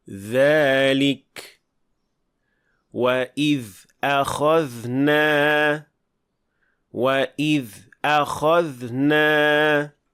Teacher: Ammo zal jarangli tovish yaʼni ovoz paychalari tebranadi, gʻash qoʻshiladi.